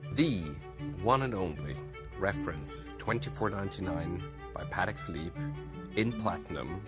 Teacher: notice how he uses falling tones repeated falling tones to really show a lot of confidence and certainty